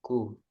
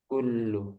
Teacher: ini harus ada keluar udara ya ku tipis